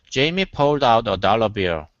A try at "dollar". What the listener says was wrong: Okay, instead of dollar, dollar. So watch that. You don't want to say dollar, but dollar. Add the R sound at the end.